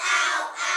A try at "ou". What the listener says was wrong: Now be careful you say ow and out, not ow and ow. Ow and out. O-U.